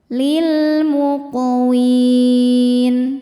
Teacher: Huruf qaf sukun dihukumi qalqalah sughra karena huruf qalqalahnya sukun asli dan ada di tengah bacaan. Cara bacanya dipantulkan dengan pantulan yang kecil.